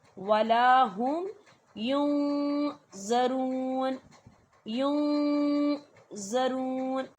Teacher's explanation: اور نون ساکن کی آواز کو جب ہم ناک میں چھپاتے ہیں تو اس کی مقدار کتنی ہونی چاہیے؟ 2 سے 3 سیکنڈ۔ · نون ساکن کی آواز کو ناک میں چھپائیں گے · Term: اقفا